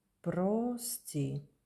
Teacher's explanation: The vowel O as the English O. But it is the not stressed you need to pronounce as A.